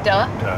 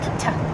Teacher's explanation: So T is a voiceless obstruent. And obstruents, they are the consonants that are produced by a stoppage of airflow.